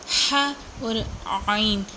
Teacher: عین زبان کے حلق کے درمیان والے حصے سے ادا ہوتا ہے۔ ہا اور عین ان دونوں کا سیم مخرج ہے، یہ دونوں درمیان والے حصے سے حلق کے درمیان والے حصے سے ادا ہوتے ہیں۔